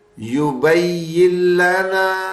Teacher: نون ہٹ رہا ہے بیچ میں سے اور اگلے پچھلے حرف مل رہے ہیں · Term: بغیر غنے کے